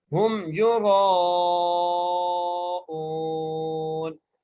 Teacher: را کو موٹا کر کے پڑھیں گے اور را کو کھینچ کر بھی پڑھیں گے